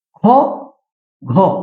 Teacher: অল্পপ্রাণ বর্ণ অন্যদিকে খ ঘ অর্থাৎ দ্বিতীয় ও চতুর্থ প্রত্যেকটি বর্গের দ্বিতীয় ও চতুর্থ এই বর্ণগুলো উচ্চারণ করার সময় বেশি শ্বাসবায়ুর প্রয়োজন হচ্ছে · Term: মহাপ্রাণ বর্ণ